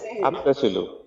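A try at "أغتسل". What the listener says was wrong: আগতাসিলু, গইন আছে আগতাসিলু।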